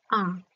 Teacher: এই আ স্বরধ্বনি উচ্চারণের সময় একমাত্র জিভ একেবারে নিম্নে অবস্থান করে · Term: নিম্ন স্বরধ্বনি